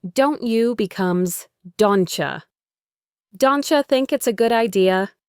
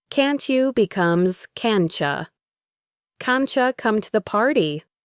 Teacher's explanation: The same thing happens with the T sound at the end of a word when it's followed by U. The T and the Y sounds blend together to create a ch sound, like in the word cheese. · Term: assimilation